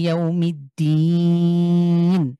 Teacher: জেরের পরে সুকুনযুক্ত ইয়া হয়েছে, মাদের হরফ ১ আলিফ। কিন্তু এখানে ওয়াকফ করার কারণে আমরা এখানে ৩ আলিফ টেনে পড়ব।